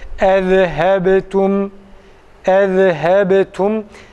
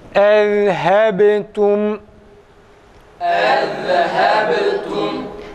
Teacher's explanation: Zal harfi cezimli halinde okunurken ses kesilmez. Ses akar, nefes akmıyor. · Ba'da tam kalkale, zalde ise sesi akıtıyoruz arkadaşlar. Kalkale yapmıyoruz.